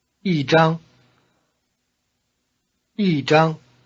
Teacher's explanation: Notice that the high tone of E changes to falling tone before another high tone.